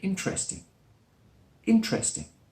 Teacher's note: often it's spoken with just 3 syllables. One is dropped